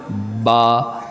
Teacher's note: دونوں ہونٹوں کے ملنے سے اور دونوں ہونٹوں کے یہ ملنے سے جو ہونٹوں کا تر حصہ ہے یہ ملانے سے ادا ہوتا ہے